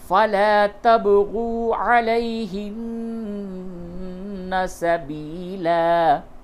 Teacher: لام علی زبر لا کو تھوڑا کھینچیے، با میں قلقلہ کیجیے